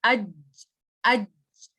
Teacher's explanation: جیم کے کیس میں ہماری middle of the tongue touch کر رہی ہوتی ہے روف آف دا ماؤتھ کو